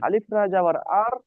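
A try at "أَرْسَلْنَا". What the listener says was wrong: আলিফ বলবেন না। আমি এর আগেও বলেছিলাম যে আলিফের উপরে যদি বা জাবার থেকে থাকে, তাহলে সেটা আলিফ নয়, সেটা হলো হামজা। ঠিক আছে, তার নাম পাল্টে যায়। আলিফের উপরে হারাকাত আসলে আলিফের নাম হয়ে যায় হামজা। তো হামজা র জবর আর।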